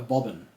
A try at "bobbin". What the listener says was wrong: Not bob end. Bobbin. Bobbin. Not an N. Bobbin.